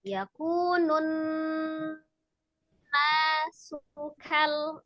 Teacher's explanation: setiap nun tasdid ditekan, ditahan 2 sampai 3 harokat. Dan suaranya dimasukkan ke rongga hidung ya · Yakunun nasukal ya, kal langsung, lam sukunnya tidak dipanjangkan, kafnya alifnya dianggap tidak ada ya.